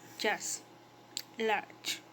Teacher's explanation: The phoneme ch has post-alveolar articulation point, that is, the tongue will touch the back of the alveoli near the palate. It has an affricate articulation mode, that is, are formed by the composition of an occlusive and its corresponding fricative.